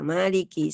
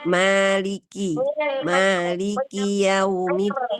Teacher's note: maliki semua hurufnya dibaca tipis, ma-nya tipis, lamnya tipis, ka-nya juga tipis, dan sempurnakan sifat sidda dan hams pada huruf k ya.